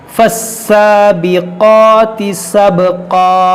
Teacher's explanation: ये क़ाफ़ हुरूफ़ मुश्तालिया है, इसको मोटा करेंगे